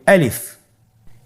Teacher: গলা এবং মুখের শূন্যস্থান হতে আলিফ হরফটি উচ্চারিত হয়।